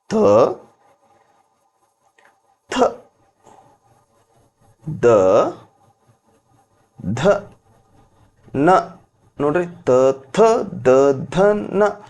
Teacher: ತ ಥ ದ ಧ ನ ಹೇಳಬೇಕಾದಾಗ ನಾಲಿಗೆ ಬಂದು ಅಲ್ಲಿ ಏನ್ ಮಾಡುತ್ತೆ ಹಲ್ಲಿಗೆ ಬಡಿತದ ಟಚ್ ಆಗ್ತೈತಿ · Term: ದಂತ್ಯ, ದಂತ